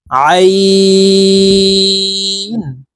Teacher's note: আইন হরফ হালুকের মধ্যখান থেকে চাপ দিয়ে উচ্চারণ করব কারণ আইন হরফের মাখরাজ হলুকের মধ্যখান থেকে হবে আইন গাইন গাইন